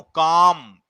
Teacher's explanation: तो का पे ज्यादा बल दिया और मां पे हमने कम दिया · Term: बलाघात